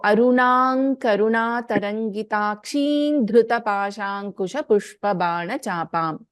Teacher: Since there is an Anuswara and we have Dha, which is the letter in Tavarga, the Anuswara gets replaced by fifth letter of Tavarga, which is Na.